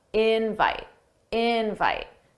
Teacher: notice how invite, the stress is on in. That's the stress syllable. Dada, invite, invite.